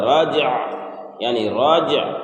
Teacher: راجع یعنی راجع، را جیم سین عین، تو راجیم جب رج اور عین ساکن ہوگا تو راجع، عین کو ظاہر کرنا ہے اور عین پر نہ زبر دینا ہے، نہ زیر دینا ہے، نہ پیش دینا ہے، بلکہ وہ ساکن ہی رہے گا